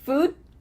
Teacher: What happens to that final D? We just cut it off.